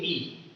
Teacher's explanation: ई, तो आपका जो मुख द्वार है वो लगभग बंद है, ई है ना, लगभग बंद यानी थोड़ा सा खुला रहता है, लेकिन मैक्सिमम आपका जो मुंह का पोर्शन है वो बंद रहता है जब आप कहोगे ई। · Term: संवृत